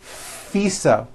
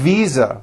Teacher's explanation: I said fisa with an unvoiced F I should have said V Visa with a voiced V